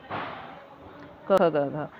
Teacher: अह प्रयत्न के आधार पर क, ख, ग, घ किस भेद के अंतर्गत आते हैं? यह स्पर्शी व्यंजन हैं।